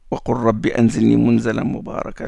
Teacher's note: Le lam entre dans le ra.